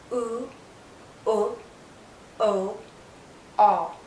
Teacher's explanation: You can't see my tongue because the highest point is the back. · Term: back vowel sounds